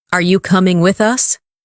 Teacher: Are you coming with us? Rising tone for question.